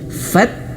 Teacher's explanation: Mudah sekali caranya yang pertama t-nya tadi disukunkan dulu, dimatikan dulu, diputuskan suaranya fat. Baru angin sedikit keluar fat.